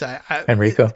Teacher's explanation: the emphasis I understand is on the second syllable